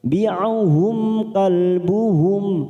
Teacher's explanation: Rabi'uhum mim sukun bertemu kaf, idhar safawi, kita baca jelas.